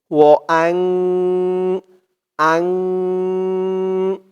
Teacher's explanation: একটু আগেই বললাম সেই 15 হরফের যেকোনো একটি হরফ আসলে তাহলে সেখানে ইকফাহ নাকের ভেতরে লুকিয়ে গুন্নাহ করে পড়তে হবে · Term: ইকফা গুন্না